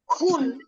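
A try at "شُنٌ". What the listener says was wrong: শুন দুই পেশ শুন। হ্যাঁ, খুন না, শুন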